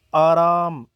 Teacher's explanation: इसे विवृत कहा जाता है क्योंकि इसके उच्चारण में जीभ बिल्कुल पीछे रहती है और मुख द्वार खुल जाता है।